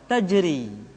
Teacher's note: ketika membaca al-qur'an yang berikutnya adalah huruf ro yang dibaca tipis ra dibaca tipis ketika dia berharakat kasrah